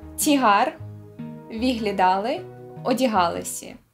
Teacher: Ймовірно, через те, що усі ці говори доволі давні. А от наголошене «а» подекуди переходить в «і»